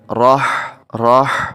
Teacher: جب ہا کو پڑھیں تو ساتھ اس میں سانس کی آواز ہے، یہ حلق سے ادا ہو